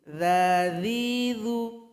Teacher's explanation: Zal ini berada di ujung lidah dengan ujung gigi.